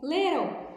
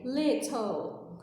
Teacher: No inglês americano, na maioria das vezes, o T vira um R.